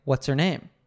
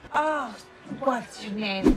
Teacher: when said quickly, the H sound in her disappears? So, all we hear is the er.